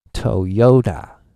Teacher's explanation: maybe the second syllable has the biggest accent